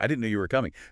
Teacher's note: try it with a little lift, a little emphasis on no and coming. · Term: intonation